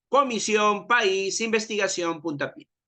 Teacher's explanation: Estas palabras reciben la mayor fuerza de voz o de pronunciación en la última sílaba. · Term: palabras agudas